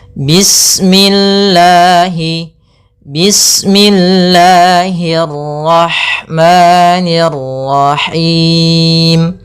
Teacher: Yaitu adanya lafzul jalalah. Panjangnya lafal Allah yaitu dua harakat. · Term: mad thabi'i